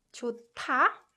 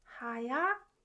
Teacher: when 히읗 받침 is combined with 디귿 consonant, it produces 트 sound.